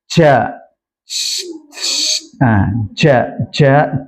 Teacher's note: Kesalahan yang sering terjadi. Makhraj jim dipindah ke ujung lidah sehingga dia memiliki safir.